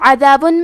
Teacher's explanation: حرف العین کی ادائیگی حلق کے درمیان والے حصے سے ہے